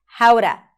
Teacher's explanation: so the T of the word to becomes flapped.